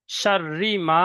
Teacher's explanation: তারপরে এখানে মিমের উপরে আলিফ, আলিফের ডান দিকে জবর এসছে, আলিফ মাদ্দা হবে। আলিফ মাদ্দাকে একালি পরিমাণ টান দিয়ে পড়তে হয়। যেমন শাররি মা, মা টান দিতে হবে একালি।